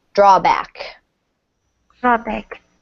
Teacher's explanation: Pretty equal stress because this is kind of a compound word.